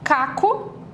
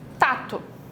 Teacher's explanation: Ela fez uma troca, substituiu um fonema posterior por um anterior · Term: anteriorizou esse som